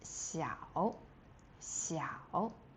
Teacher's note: The third tone is really low.